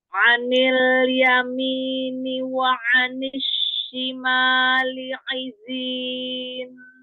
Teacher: Ya, jadi beda ya kalau dia dengan lurus, matnya, kedengarnya juga kan lurus suaranya ya, nggak naik-naik ke atas.